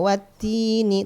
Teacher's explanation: tetap ada sifat hamesnya di dalam huruf ta walaupun sedikit ya